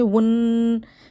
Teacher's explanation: واو کو ہم نون کے ساتھ ملا کر ایک دفعہ پڑھیں گے ، ون، پھر نون کو ہم دوبارہ پڑھیں گے نا، نون